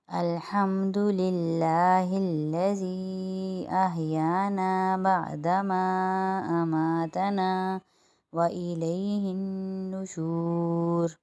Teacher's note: الحمد للہ باریک پڑھا جائے گا کیونکہ اللہ کے نام کے پہلے لفظ میں زیر آ رہا ہے۔ الذی کے اوپر چھوٹا مد ہے، اس کو 3 الف کی مقدار یعنی 3 انگلیاں کھولی اور بند کی اتنا کھینچیں گے